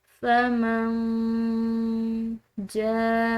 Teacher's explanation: ہم نے جیم کو کھینچ کر ادا کیا ہے کیونکہ اس کے بعد الف پر یہ بڑی مد ہے